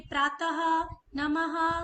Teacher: यानी जो हम इंग्लिश में कॉलन बोलते हैं उस तरह से हम इसको लिखते हैं और जब हम इसका उच्चारण करते हैं तो ह की एक ध्वनि आती है